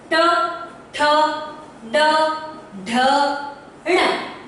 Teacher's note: ठ अपना फोर्स से जो है जिह्वा ऊपर से मूर्धा को टच करके नीचे आती है